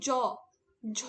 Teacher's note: কিন্তু ঝ দেখো গম্ভীর একটা শব্দ বেরোচ্ছে। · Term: ঘোষ